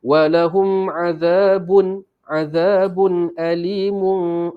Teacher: walahum mim ni tak dengung sebab ada tanda mati atas dia. Ini ialah izhar syafawi.